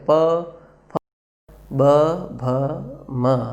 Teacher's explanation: એવી જ રીતે પફ, બભ, મ, આ 5 વ્યંજન બોલીએ તો આપણા બંને ઓષ્ઠ એટલે બંને હોઠ સ્પર્શ થાય છે. પ, ફ, બ, ભ, મ, તો એમને ઓષ્ઠી વ્યંજન કહેવાય છે.